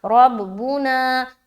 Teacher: ربنا، را با زبر رب، با پیش بو، نون الف زبر نا، ربنا، را کو موٹا رکھیں گے کیونکہ زبر ہے